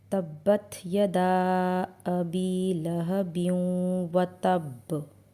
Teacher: यहां यदा में अलिफ मद्दा है इसलिए इसे खींच कर पढ़ेंगे और यहां मदे मुनफसिल भी है इसलिए इसको सिक्स काउंट्स तक खींचना होता है।